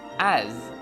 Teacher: although as is spelled with S, this letter sounds like Z, as. Pronouncing it with an S sound may cause some confusion because the word arse means something completely different.